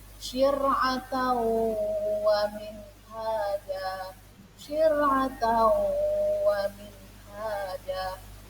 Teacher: cara bacanya langsung meleburkan suara wawnya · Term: idgham bi gunnah